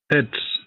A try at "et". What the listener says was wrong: Why are you saying et? Is it pronounced? Is T pronounced?